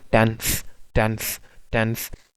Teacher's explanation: मिलेगी, टेंस में जब हम कहते हैं ना टेंस, टेंस, टेंस, आप नोटिस करेंगे कि आप की जो टंग है before the upper front teeth touch करेगी